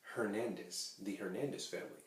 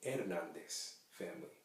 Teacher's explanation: H is actually not pronounced when it's at the beginning of a word.